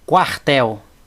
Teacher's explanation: Não tem acento, terminou em L, a sílaba tônica é a última.